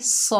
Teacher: सौद के ऊपर ज़बर है, आगे अलिफ खाली है, ये अलिफ मद्दा है, एक अलिफ की मिकदार खींच कर पढ़ेंगे। सौद जो है हरूफे इस्ताला में से है, मोटा पढ़ा जाएगा।